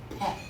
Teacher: It is actually a Greek letter. And it was originally pronounced as an aspirated P heard as P with a puff of air at the end. That's what an aspirated P is.